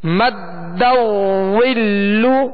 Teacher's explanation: دال مشدد ہے، دال کو اس میں جماؤ خوب جماؤ کے ساتھ ادا کریں گے